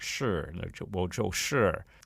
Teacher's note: a lot of americans they put a little bit of more of an r on the end of that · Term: american accent